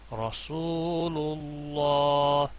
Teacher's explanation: اس میں جلالہ کا نام اور پچھلے حرف کے اوپر پیش اور یہاں پر زبر تو دونوں جگہوں پر پر ہوگا، یعنی موٹی آواز میں پڑھا جائے گا